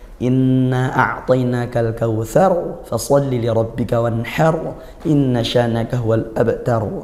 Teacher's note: ra yang di akhir semuanya hukumnya tafkhim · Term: ra tafkhim